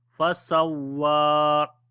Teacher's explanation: On the waw we long here because due to standing fatha